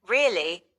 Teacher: Rising intonation is typically used for yes no questions or to express surprise like when I say really with an upward pitch at the end.